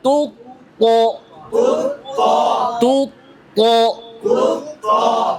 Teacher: তাতে দম্মা আছে, ঠোঁট গোল করে। তুত সামনের দিকে চাপায় আনতে হবে। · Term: তাফখিম